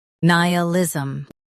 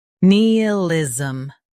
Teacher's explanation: nay ih liz um nealism nay ih liz um nealism In US, stress ni. In UK, stress ne instead.